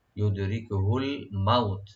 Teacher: সুম্মা ইউদরিকুহুল মাউতু, ইউদরিকুহুল মাউতু, ইউদি দালে একটু কলকলা করবো আমরা, রা পাতলা করে পড়বো, ইউদিরিক, কাফে একটু হামস করবো, ইউদরিকুহুল মাউত, মাউ এখানে হারফে লিন, মাউতু তাতে টান নাই